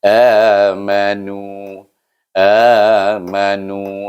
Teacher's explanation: Baris depan tu kena baca dengan panjang 2 harakat, iaitu dengan hukum mad asli. Amanu, amanu, 2 1 2.